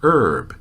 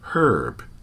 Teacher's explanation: about ninety percent of Americans still do not pronounce the H · the same is true for about fifty percent of Canadians however in much of the rest of the english-speaking world the word is pronounced with an H